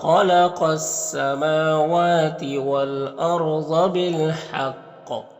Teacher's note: یہاں پر خا اور قاف دونوں کو پر پڑیں گے